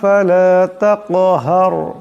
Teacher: এখানে কাফ সাকিন, কাফ হলো কলকলা হরফ, তাই আওয়াজটা একটি টক্কর খাবে।